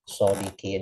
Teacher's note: huruf qaf dan sifatnya dijaga ketebalannya karena dia kasroh nih ya vokal tipis ya maka jangan sampai qafnya jadi kaf